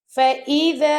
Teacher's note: اکثر لوگ کیا کرتے ہیں کہ نرمی سے تو پڑھتے ہیں، لیکن موٹا پڑھ دیتے ہیں دال کو. دال کو باریک پڑھنا ہوتا ہے